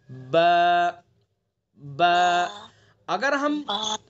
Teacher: एक तो खुश्क वाला हिस्सा है, बाहर का हिस्सा जो खुश्क रहता है, और एक होठ का अंदर का हिस्सा है जो तर वाला हिस्सा है। तो बा को हमें अंदर वाले हिस्से से, होठों के अंदर वाले हिस्से से यानी तर वाले हिस्से से अदा करेंगे।